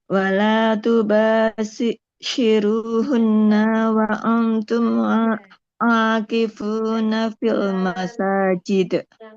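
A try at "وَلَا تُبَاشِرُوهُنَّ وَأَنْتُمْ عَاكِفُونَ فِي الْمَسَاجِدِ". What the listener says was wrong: Nah, di hunnanya nggak boleh panjang. Wala tubashiruhunna wa antum akifuna fil masajid.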